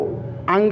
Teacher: जो अंगा है तो नासिका से बोला ही जाता है, और साथ साथ कंठ से भी बोला जाता है। तो कंठ प्लस नासिका, ये कहाँ से बोला जाता है?